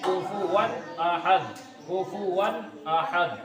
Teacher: اظہار کا مطلب ظاہر کر کے پڑھنا، ظاہر کر کے پڑھنا، یعنی غنہ بھی نہیں کریں گے، اخفا بھی نہیں کریں گے، اطلاق بھی نہیں کریں گے، ادغام بھی نہیں کریں گے، بلکہ ظاہر کر کے پڑھیں گے